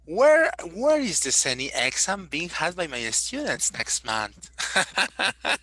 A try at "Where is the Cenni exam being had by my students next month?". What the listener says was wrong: No, it's a question intonation. That is still a statement. No, it's the incorrect intonation.